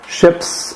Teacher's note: we have ships with a voiceless s